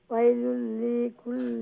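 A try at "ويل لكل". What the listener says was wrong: না ও যে ওয়াইলুল লি যে একটু লম্বা হই যায় আমি কই আপনি শুনুকা ওয়াইলুল লিকুল্লি ওমলা খান তাড়াতাড়ি ওয়াইলুল লিকুল্লি হুমাযাতিল লুমাযা কোকে সাইন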